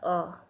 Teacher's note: उच्चारण कंठ से होता है। मात्रा यह ह्रस्व है। जीभ की स्थिति मध्य होती है। मुख्य विवर अर्ध विवृत होता है।